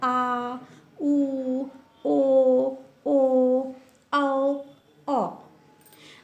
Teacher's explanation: इन्हें बोलने में हमारे ओ वाला साउंड निकल के आता है। हमारे होठ ऐसे बन जाते हैं। राउंड।